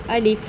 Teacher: بچوں الف کو ہم بالکل نرمی سے پڑھیں گے، اس میں عین کی آواز پیدا نہ ہو۔ بچوں الف بالکل سیدھا ہے، ایک لکیر کی مانے۔